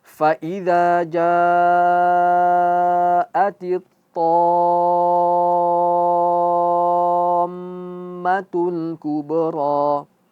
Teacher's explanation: Harus jelas. To-nya 6 harakat, mimnya juga harus digunnahkan. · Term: mad musaqqal